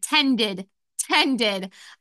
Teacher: since tend ends in D, it will also have the id sound for ed. And it has 2 guardian consonants, so we add on the ed suffix.